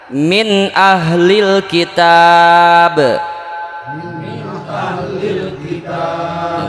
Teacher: mengeluarkan setiap huruf dari makhrajnya tanpa memakai gunnah, dengung ya, tanpa memakai dengung. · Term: izhar